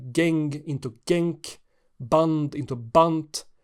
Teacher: One such sound change is final devoicing of stops and also fricatives